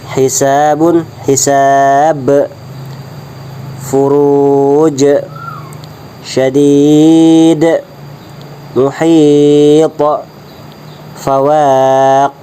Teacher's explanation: disebut dengan hukumnya qalqalah wusta, yaitu pantulannya dibaca sedang